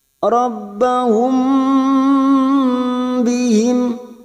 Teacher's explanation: mim sukun bertemu ba maka kita dengungkan siap masuk pada huruf ba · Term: Ikhfa Syafawi, ikhfa safawi